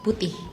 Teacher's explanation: With Indonesians, you have to kind of like pronounce the H at the end.